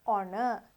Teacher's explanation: අපි හ sound එක silent මෙතන honor කියලා තමයි කියන්නේ.